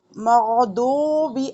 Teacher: اب دعات پڑھنا ہے تو زبان سائڈ پر لے کر جانی ہے، اگر آپ کی زبان سامنے کے دانتوں پہ لگ رہی ہے زبان کی نوک، تو دعات کی بجائے آپ کا دال ادا ہو رہا ہے.